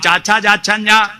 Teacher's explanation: നാവ് അണ്ണാക്ക് പറ്റിച്ചിട്ട് താലവ്യം